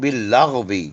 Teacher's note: غین کو حلق کے اوپری حصے سے پڑھیے